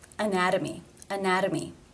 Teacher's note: it is a tee between two vowel sounds anatomy anatomy therefore it is the flap T sound or D